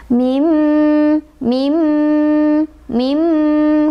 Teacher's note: Sebabnya karena ada nun sukun bertemu dengan huruf idgom bigunnah, yaitu mim. Cara bacanya sama, dimasukkan ke huruf mim nunnya ya, sambil berdengung.